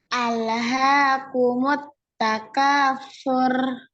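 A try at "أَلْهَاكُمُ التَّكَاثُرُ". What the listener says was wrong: Sur. Jadi bukan sur. Ini dikurangi ya takrir ya. Yang benar ar. Jadi sekali aja, getaran sekali aja. Ar. Jadi yang ngalir suara ar. Ini dialirkan suaranya ya. Ar, gitu ya. Ar. Jadi bukan ar, bukan gitu, tapi ar. Jadi sekali aja getaran sekali. Ar, ir, ur, ya. Jadi yang ngalir itu adalah suara yang itu ya.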